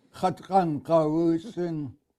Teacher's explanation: high tone U. Make it long.